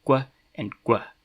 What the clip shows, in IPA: kʷ and ɡʷ